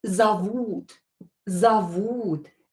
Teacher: when O is not stressed, pronounce it as A.